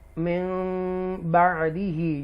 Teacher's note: यहाँ इक़लाब होगा क्योंकि नून साकिना के बाद बा आ रहा है इसलिए मीम लगा है